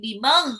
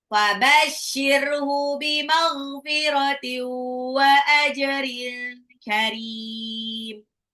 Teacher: Bimagh itu ghain ya, ghainnya agak ngorok